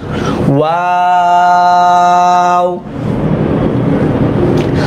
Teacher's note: ওয়াও এর উচ্চারণটা কিন্তু ঠোঁট গোল করে শুরু গোল করেই শেষ